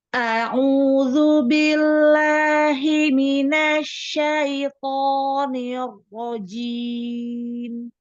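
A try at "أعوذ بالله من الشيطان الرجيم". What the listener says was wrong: Bagus, Masya Allah.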